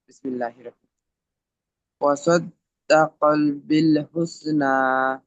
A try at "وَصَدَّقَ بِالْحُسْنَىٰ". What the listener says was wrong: সদ্দা কল নয়, وصدق بالحسنى।